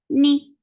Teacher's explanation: for kasra, give E sound, and the sound is short.